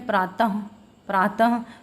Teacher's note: विसर्ग का उच्चारण स्थान जो है कंठ